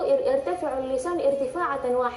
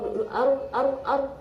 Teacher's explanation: huruf ro ya jadi ro atau jadi ketika naik itu ir jadi lidah itu naik sekali doang getarannya sekali jangan atau ar ar ar apalagi kalau misalnya tasydid ya jadi